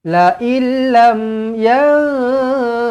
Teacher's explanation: dua huruf ni adalah huruf idgham bila ghunah bermakna tak payah dengung